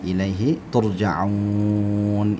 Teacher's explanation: ini kita panjangkan sampai 6 harakat boleh, namanya mad arid lis-sukun